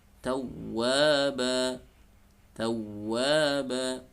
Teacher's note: di tawwaba ini tidak perlu ada gunnah, tidak perlu ditahan, jadi hanya ditasydidkan saja ya, ditinggikan suaranya.